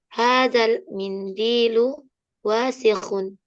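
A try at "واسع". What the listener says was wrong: Pendek. Wasikhun.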